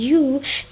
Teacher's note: When someone says the sound U, the lips become rounded